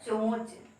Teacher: आपका उच्चारण जो है नाक से हो रहा है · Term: अनुनासिक